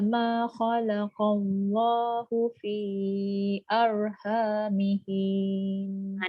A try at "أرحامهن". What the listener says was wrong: Dia je bukan panjang antara ha dengan nun. Arhamihin. Masuk nun terus.